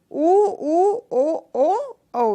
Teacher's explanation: ओष्ठों की स्थिति के अनुसार वृत्ताकार या वर्तुला प्रकार के जो स्वर हैं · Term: वर्तुलाकार स्वर